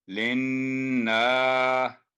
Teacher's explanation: نون مشدد آ گیا، نون پر تشدید ہے گنہ کر کے